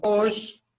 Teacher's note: porque tiene el acento en la O, se le pronuncia un poquito más fuerte